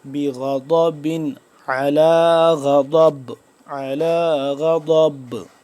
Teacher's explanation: ضاد کا مخرج زبان کی بائیں کروٹ کو اوپر والی داڑھوں کے ساتھ جب ٹچ کریں گے تو صحیح طرح سے ضاد ادا ہوگا. دائیں طرف بھی ٹچ کر سکتے ہیں، بائیں طرف بھی، لیکن بائیں والی سائڈ والا تھوڑا سا آسان ہے بقدر دائیں کی.